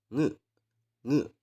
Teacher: Sama halnya seperti kalian ingin mengucapkan ini nge. Jadi udara yang dihembuskan itu ya dikeluarkan atau dihembuskan dari hidung